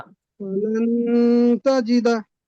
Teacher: নুন সাকিনের আওয়াজকে এক নাকে তুলে এক আলিফ পরিমাণ গুণনা করে পড়তে হয় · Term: ইকফা